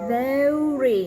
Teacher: R sound is strong and your lips are coming forward. Your tongue is back and you push out the R.